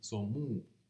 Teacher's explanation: because the M is nasal, the O became nasal, and that then the nasalized vowel rose to oo